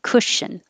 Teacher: remember that the vowel is as in took and good. So don't round your lips. Cushion. I have to round a little for the sh, but not too small, or it'll be coo, cushion.